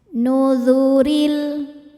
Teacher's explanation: rnya dibaca tarqik karena barisnya di bawah cara bacanya ro tipis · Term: tarqiq